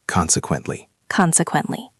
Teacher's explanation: It is 4 syllables. Consequently. Stress on the first syllable.